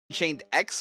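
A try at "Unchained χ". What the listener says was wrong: X is pronounced key.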